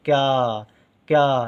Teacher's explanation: अब यहाँ पर आप सुन रहे हैं क्या, का उच्चारण हो रहा है लेकिन बहुत कम समय के लिए हो रहा है। का उच्चारण होते ही तुरंत या का उच्चारण हो जाता है और देर तक होता है